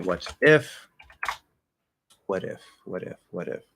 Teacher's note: if it happens to be spelled with a t the sound that's produced is a d when it flaps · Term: flapped d